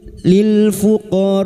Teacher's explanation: mad wajib muttasil lima harakat kita panjangkan